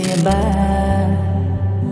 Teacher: দুই ঠোঁট ভেজা হতে মিলিত করে বলতে হবে বা।